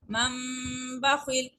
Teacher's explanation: اب نون کے اوپر چھوٹا سا میم پڑا ہوا ہے، چونکہ یہ میم اقلاب کا ہے. جب بھی نون ساکن کے بعد آگے نیکسٹ میں با لیٹر آ جاتا ہے تو اس نون کو میم کی آواز میں بدل دیتے ہیں، جس کو اقلاب کہتے ہیں، اور اس پر غنہ کرتے ہیں.